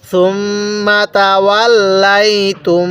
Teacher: তাহলে সুম্মা তাওয়াল্লাইতুম তা লাগবে এই সেকেন্ড মিমটির সাথে। এই মিমের মধ্যে আবার টান দিব না, এই সুম্মার মধ্যে আমরা টান দিব না